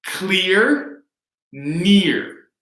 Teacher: the stressed vowel sound is identical